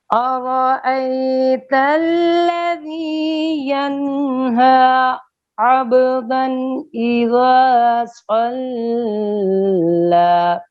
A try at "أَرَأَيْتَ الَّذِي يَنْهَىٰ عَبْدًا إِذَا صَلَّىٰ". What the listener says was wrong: صلى غلط ہے، لام کے اوپر دیر نہیں لگے گی، پھر پڑھیے